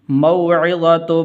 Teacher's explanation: یہ واو یہ حروف لین میں سے ہے تو اس لیے اس کو لمبا نہیں کرنا۔ موعظۃ من ربہ فانتہى فلہ ما سلف، من ربہ، ہا کے نیچے کھڑی زیر ہے تو اس لیے اس کو ایک الف کے برابر لمبا کرتے ہیں، کھڑی زبر ہو یا کھڑی زیر یا الٹا پیش تو اس کو ایک الف کے برابر لمبا کرنا ہے۔